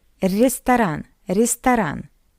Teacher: after the first R, we have ye. That's why R is soft.